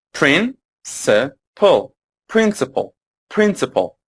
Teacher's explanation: this word has three syllables, and the stress is on the first.